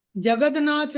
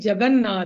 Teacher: त के बाद न आने पर त का भी न हो जाएगा।